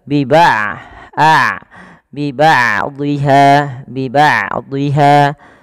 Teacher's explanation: huruf Ain tidak terlalu dialirkan dan tidak terlalu ditahan suaranya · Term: bainiah